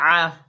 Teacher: आइन जो है हलक के दरमियान से अदा होगा।